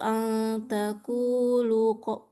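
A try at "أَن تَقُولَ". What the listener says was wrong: Takula. Kenapa selalu takulu nih? Takula.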